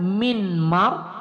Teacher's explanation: Jadi kalau tadi dia kan min mar, nah kalau dia diidghamkan maka huruf pertama tuh hilang bunyinya, yang kedengaran adalah huruf kedua aja, seperti bertasdid ya. Itu adalah idgham ma'al gunnah atau boleh juga idgham bi gunnah ya.